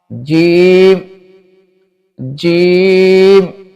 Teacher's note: یہ جو ہے زبان کے درمیان اور تالو کے درمیان سے ادا ہوتا ہے۔